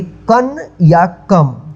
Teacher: इसको अनुस्वार बोलते हैं। इसका उच्चारण जो है आधा न होता है या आधा म होता है